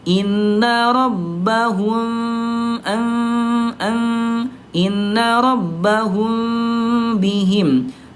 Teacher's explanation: bibirnya tidak betul-betul dirapatkan seperti halnya mim bertemu dengan mim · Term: ikhfa syafawi